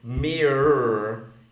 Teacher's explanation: in American it's mere, it's mere plus a syllabic R